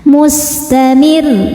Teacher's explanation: Dan karena ro-nya ini ada tasydidnya, berhenti pada huruf bertasydid yang bukan gunnah, bukan nun, bukan mim, bukan qalqalah, bukan ba, jim, dal, to atau qaf, berhentinya pakai nadr, naikkan intonasi suaranya.